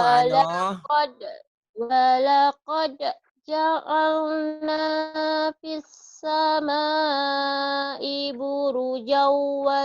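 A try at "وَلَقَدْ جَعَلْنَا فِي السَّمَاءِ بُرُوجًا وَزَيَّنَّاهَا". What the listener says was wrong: Buruj jauhnya panjang. Walaqad qalqalah. Walaqad. Walaqad.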